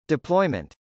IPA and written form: dɪplˈɔɪmənt (deployment)